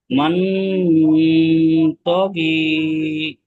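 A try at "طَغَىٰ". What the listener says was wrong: তো গয়েন জের, গয়েন জের, গয়েনের নিচে জের আছে কি? গয়েনের উপর খাড়া জাবার আছে, খাড়া জাবার। খাড়া জাবার, গয়েন খাড়া জাবার। গ, গয়েন খাড়া জের থাকলে গি হতো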